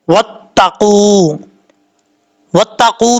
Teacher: واو ساکن سے پہلے پیش ہے تو واو کیا ہوا؟ مدہ ہوا، ایک الف کی مقدار اس کو لمبا کر کے پڑھیں گے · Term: واو مدہ